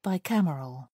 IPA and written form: baɪˈkæmərəl (bicameral)